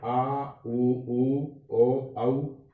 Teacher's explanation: पश्च स्वर में वे स्वर जिनमें जीभ का पिछला हिस्सा क्रियाशील रहता है, जिनका उच्चारण करते समय जीवा की क्रियाशीलता है, जीवा की स्थिति है वह है पश्च भाग में दिखाई देती है, पिछला हिस्सा है वो क्रियाशील होता है।